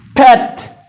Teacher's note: शुरू में जब पी आएगा तो ज्यादा एस्पिरेशन होगी, उसमें ज्यादा एस्पिरेट यानी कि ज्यादा पफ साउंड होगी।